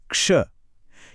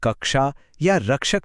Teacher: हम लेते हैं आधी ध्वनि क और आधी ध्वनि श। और जब यह मिलते हैं तो एक बिल्कुल नया कैरेक्टर और एक नई साउंड बन जाती है। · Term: संयुक्त व्यंजन